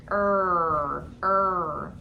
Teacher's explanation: it's called the bunched r and what your tongue does is it goes back in your mouth and it bunches up it gets wide in the back and there's lots of tension